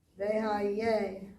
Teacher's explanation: it's a het, so it's basically in the throat